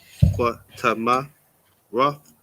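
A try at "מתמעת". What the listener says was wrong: No, there's no rub. That's an ah there. Matama'ath.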